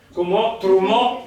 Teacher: lo sentite che è tronca la parola, cioè l'accento cade sull'ultima